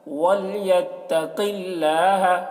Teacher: قاف کو پر پڑھیں گے، قاف حروف مستعلیہ میں سے ہے، اور اللہ کلام کو باریک پڑھیں گے کیونکہ اللہ کلام سے پہلے زیر ہے۔